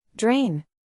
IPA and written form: dreɪn (Drain)